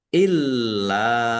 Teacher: Lamnya ada tasdidnya dibaca dobel ditekan dan ditahan agar tampak dobel. illa lam fathah alif mad thobi'i.